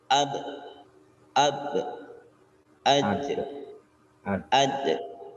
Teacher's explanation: hembusan napas ya tidak boleh keluar tidak boleh pakai hembusan nafas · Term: Qalqalah